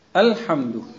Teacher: تو ال کا حمزہ برابر آنا چاہیے، خوب قوت سے نکالنا چاہیے، ٹن کی آواز آنی چاہیے